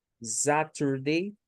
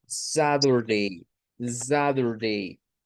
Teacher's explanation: Si es un inglés norteamericano, los estadounidenses hacen la T intervocal, es decir, una T que está en medio de vocales, la hacen con un sonido como de una D o de una R a veces. Entonces, Saturday, Saturday es pronunciación estadounidense cuando escuchamos el día así.